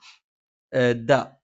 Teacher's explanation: നാവിന്റെ അറ്റം മേലെ മുൻബല്ലിന്റെ മുരട്ടിലാണ്